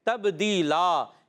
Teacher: آخر میں وقف کرنے میں دو زبر کی تنوین کو الف سے بدل دیں گے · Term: وقف بالابدال